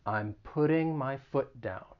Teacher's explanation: being from the united states i am going to use a flat t so it'll sound like a soft d